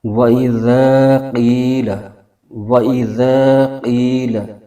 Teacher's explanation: قاف کو موٹا بھی پڑھنا ہم نے، باریک نہیں کر کے پڑھنا